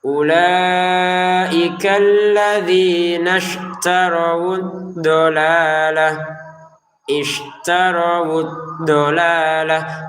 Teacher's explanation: Huruf dod ini huruf yang paling sulit ya dari 28 huruf hijaiyah itu karena cara pengucapannya itu dari sisi kanan lidah atau sisi kiri lidah kita dari pangkalnya sampai ujungnya itu menyentuh ke gigi atas